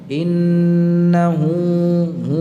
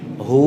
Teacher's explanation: Pangkal tenggorokan. Berarti keluarnya dari mulut, ya, dari mulut, bukan dari hidung. Jadi bukan didengungkan. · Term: huruf halqiyah